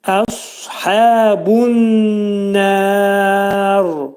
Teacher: Sad hərfinin məxrəci dil kökdən qaldırılaraq qalın şəkildə deyiləcək